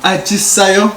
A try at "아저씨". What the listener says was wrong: No, not sayo. It's the person. 아저씨. 아저씨. 아저씨.